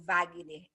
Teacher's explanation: Esse Wagner, esse W, tem som de V.